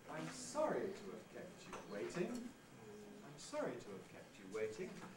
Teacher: ah i'm sorry that's a high fall kept you waiting that's a low rise · Fall plus rise, high fall plus low rise. That gives us our compound high dive pattern. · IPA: aɪm sɒri tu əv kept ju weɪtɪŋ